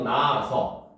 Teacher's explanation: 낮다 여기에 아서가 붙게 되면 적을 때는 히읗을 써서 나아서 쓰지만 발음할 때는 히읗이 탈락되서 나아서 요렇게 발음이 돼요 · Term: 히읗 탈락